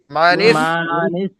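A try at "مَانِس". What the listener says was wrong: ভাই মা টান দিচ্ছেন কেন? মানিস। তা গয়েন জবর তাও, হালকা। মানিস তাও, নুন ইয়া খারা জবর না, মানিস তাও না।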